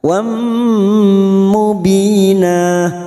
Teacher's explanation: Fathah tanwin bertemu mim idgham bi gunnah, siap masuk dan mendengung, mendengung selama 2 atau 3 harokat